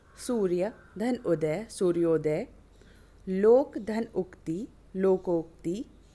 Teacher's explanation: अ आ के आगे उ आए तो दोनों मिलकर ओ हो जाता है।